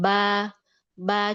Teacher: Nah itu jahar, disebabkan pita suara menutup, jadi nafas nggak banyak.